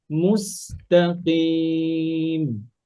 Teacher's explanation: মাখরাজ ঠিক থাকবে কিন্তু বেশি হেভি হবে না কাসরার কারণে